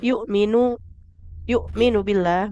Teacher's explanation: hamzahnya pastikan ditekan dengan sempurna. Suaranya tertahan total.